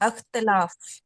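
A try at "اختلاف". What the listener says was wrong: हाँ, इख्तिलाफ। जी, वही वो अलिफ के नीचे जेर है, सेल्फ इम्प्लाइड है, तो वो इख्तिलाफ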